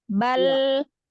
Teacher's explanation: Bal ini lamnya dibaca jelas Ustazah. Lam sukun itu ditahan inhirab bainiyah. Kasih alirkan sedikit.